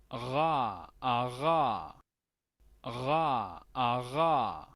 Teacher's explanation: el sonido acá uvular. Se le llama R uvular o R gutural. Son los nombres que suele recibir.